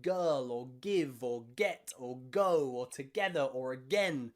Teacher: front of your tongue stays down it's just the back of your tongue at the back of your mouth that stops the sound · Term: g sound